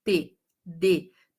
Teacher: você percebe que a ponta da sua língua, T, D, tá lá no alvéolo, que é como se fosse essa almofadinha aí, né? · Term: alvéolo dental